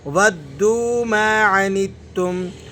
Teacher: لا يألونكم خبالا ودوا ما عنتم. یہاں پر واؤ کو دال سے ملائیں گے تو سختی کے ساتھ جماؤ کے ساتھ پڑھا جائے گا، اور پھر واؤ آگے واؤ مدہ ہے تو اس وجہ سے ہم اسے کھینچ کر بھی پڑھیں گے.